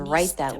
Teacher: we have a stop te right because the final sound is a t and the next word begins with a th